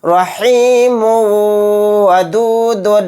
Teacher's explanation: میم کے اوپر تنوین ہے، تنوین کے بعد واو آ گیا تو یہاں پر بھی ادغام مع غنہ کا قاعدہ ہوگا، میم کو واو میں ملاتے ہوئے غنہ کر کے پڑھیں گے